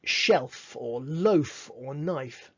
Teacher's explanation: pushing the air out between your lip and your teeth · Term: dentalabial fricative